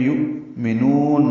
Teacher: یؤمنون، حمزہ ساکن روایت حفص میں جھٹکے سے پڑھا جاتا ہے، یہ واو کی شکل میں ہے. یؤمنون، نون کو لمبا کریں گے، وقف کر رہے ہیں اس لیے، مد عارض سکون بنائیں گے اور لمبا کریں گے